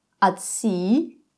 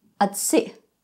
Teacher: At se, the long vowel, no glottal stop. At se, short vowel, and the glottal stop at the end.